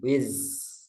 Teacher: zai yang sukun jangan dicampur dengan sin